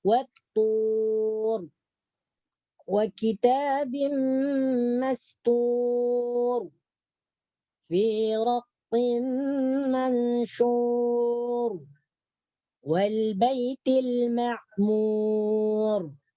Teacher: ra di sini dibaca tebal karena didahului huruf waw dan ra-nya diwaqaf. Ra yang diwaqaf atau yang dimatikan didahului huruf waw. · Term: ra tafkhim